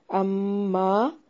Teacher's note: اما میں مشدد پہ غنہ لازم ہے